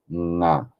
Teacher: you are giving a nasal resonance, but the sound is still coming from the throat. Nga.